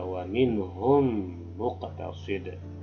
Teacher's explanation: masuk mimnya ke mim yang depan setelahnya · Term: idgham tamtsilain